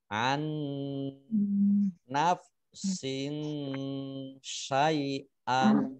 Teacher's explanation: sin kasroh tanwin bertemu dengan sya, dibaca samar-samar, namanya ikhfa ya.